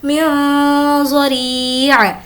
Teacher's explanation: لہم طعام الا من ضریع، یہاں پر ہم اخفا کریں گے کیونکہ ضاد حرف اخفا میں سے ہے، نون ساکن کے بعد ضاد ہے، اس لیے یہاں پر نون ساکن کی آواز کو ناک میں چھپا کر پڑھیں گے۔